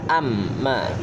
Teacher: Dalam surat Abasa sebab ada huruf mim dan tasydid, ketika dibaca huruf mimnya harus didengungkan antara 2 sampai 3 harokat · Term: gunnah